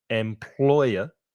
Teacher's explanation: employer three syllables the stress is in the middle